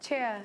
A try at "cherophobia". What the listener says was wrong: if it was double E, then it would be chair, but it's cherophobia. It's not e. cherophobia